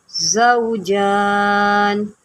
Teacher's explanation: ज़ा जो होता है हरूफ सफ़ीरिया में से होता है, तो इसकी सीटी निकालें।